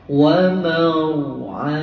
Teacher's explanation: Wa maw jumpa dengan ra tebal ya. Jangan wamar, wamar tu nipis, tebalkan.